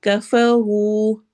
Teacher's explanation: را کو موٹا اور ساتھ ہی واو مدہ کرنی ہے، لمبا کرنا ہے، 2 حرکہ